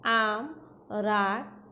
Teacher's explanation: একাক্ষর বিশিষ্ট শব্দের আ কিছুটা দীর্ঘ উচ্চারিত হয়